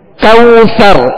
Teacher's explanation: یہاں واو لین کا قاعدہ ہے, لہذا نرمی کے ساتھ معروف طریقے سے ادا کریں گے